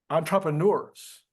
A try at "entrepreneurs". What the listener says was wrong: entrepreneurs. I think you were emphasizing Trump in the middle, but I just want to make sure, just clarifying the announcement. Entrepreneurs.